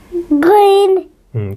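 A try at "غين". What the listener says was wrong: थोड़ा नरम करके। आहिस्ता आहिस्ता, जोर नहीं लगाना।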